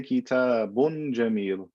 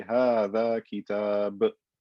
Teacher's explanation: I only pronounce the tanween, the extra noon, when I'm continuing on to the next word. If I stop, I don't pronounce the tanween.